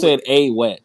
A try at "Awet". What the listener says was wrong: Focus on the ah sound, not the s sound. It's Awet.